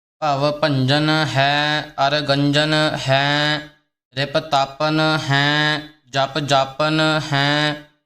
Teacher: ਇਹ ਭੰਜਨ ਕੱਸ ਕੇ ਬੋਲਣੇ, ਜਿਸ ਨਾਲ ਟਿੱਪੀ ਵੀ ਪੂਰਨ ਰੂਪ ਵਿੱਚ ਲੱਗ ਜਾਵੇ